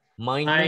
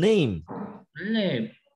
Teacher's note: chữ N N hơi ở mũi ra nào